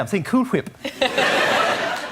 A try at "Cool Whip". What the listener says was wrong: Oh, you're saying Cool Whip. You're putting a lot of emphasis on the H.